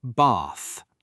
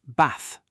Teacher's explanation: The word bath, for example, is pronounced with a long ah sound in British English. Bath, not bath with a short sound.